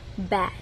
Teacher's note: the consonant after the vowel stops the vowel from having a long open sound. This closure makes the vowel sound short.